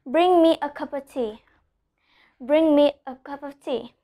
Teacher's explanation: we pronounce the NG, but we don't add the G sound at the end